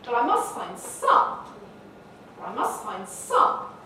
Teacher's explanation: the broadest focus of all where we elevate some to a level of importance